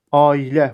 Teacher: A-i sait hərf birləşməsi arasına y samiti artırılıbdır və A saiti də uzun tələffüz olunubdur. Düzgün transkripsiyada da qoşa nöqtə ilə bu göstərilibdir.